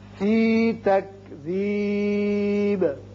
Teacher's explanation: وقت کی صورت میں با ساکن ہو جائے گا اور اس کی صفت قلقلہ ادا ہوگی